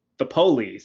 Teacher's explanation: That's the way that the word is pronounced. Police, with the emphasis on the first syllable.